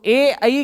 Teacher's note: ए आई का स्थान, उच्चारण स्थान होता है कंठ प्लस तालु